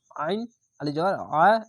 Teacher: এবং আইনটিকে মোটা করে গলা চিপে পড়বেন